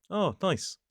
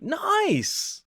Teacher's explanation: A flat voice just sounds polite